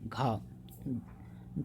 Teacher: घा है महाप्राण, क्योंकि अल्पप्राण ग होता है और घा महाप्राण